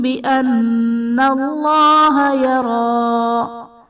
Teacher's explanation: بان اللہ میں نون مشدد ہے، یہاں پر غنہ کریں گے